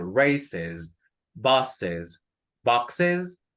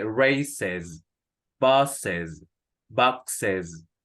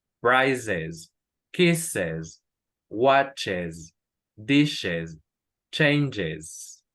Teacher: la última S es un sonido Z. Lo estoy exagerando un poco, pero no es una S normal, sino que es una S un poco sonora.